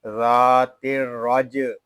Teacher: را جیم زبر رج، را کو جیم کے ساتھ ملائیں گے، جیم ساکن ہے، اس میں قلقلہ خوب ظاہر کریں گے۔